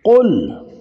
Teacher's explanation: قاف موٹا، زبان کی جڑ اور لحات